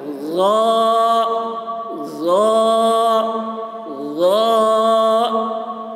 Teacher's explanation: सा और लाल की आवाज़ बारीक होती है और गा की आवाज़ मोटी होती है, तो इसको मोटी आवाज़ में बोलना है।